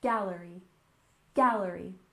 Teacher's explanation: Gallery with stress on the first syllable